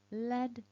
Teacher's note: i put my tongue behind the top teeth and as i make the sound i release the tongue forwards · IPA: /l/